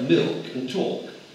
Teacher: Farther along the spectrum, there are words like milk and talk, where a consonant, as opposed to a vowel, follows the L. Here the L may be sounded a bit.